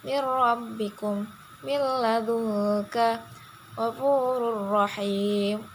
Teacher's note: Cara membacanya yaitu dilebur dan langsung membaca huruf sesudahnya tanpa disertai dengan dengung. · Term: idgham bila gunah